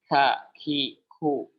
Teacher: yang harusnya lebih kuat adalah syiddahnya ketimbang hamsnya. Jadi ketika mengucapkan huruf kaf itu tidak boleh, ini kami dengan sanad yang sampai ke kami, tidak boleh sampai terlalu jelas hamsnya.